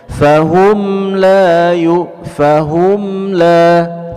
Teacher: mim punya sifat bainiyah, ketika dia sukun sedikit mengalir suara kita